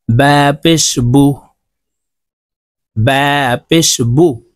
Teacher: زري প্রিয় দর্শক এখন আমরা পেশ হরকত দিয়ে হরফের উচ্চারণ শিখব পেশের উচ্চারণ ঠোঁট গোল করে তাড়াতাড়ি করে উচ্চারণ করতে হয়